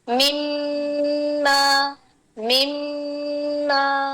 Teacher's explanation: یہ جو ساکن میم تھا اس کو ناک میں سے گزار کے لائے ہم